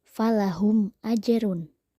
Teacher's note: ba cara membacanya haruslah jelas contohnya di ayat 6 falahum ajrun mim mati bertemu Alif maka harus dibaca jelas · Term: izhar syafawi